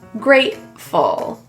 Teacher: In this word, the T is pronounced as a glottal T.